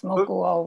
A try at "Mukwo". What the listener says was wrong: Yeah, Mukyo. Kyo would be a different word than quo. So Mukwo, the U is like a W, Mukwo.